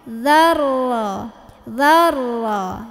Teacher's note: Dalnya tetap pendek, tekan ke ro.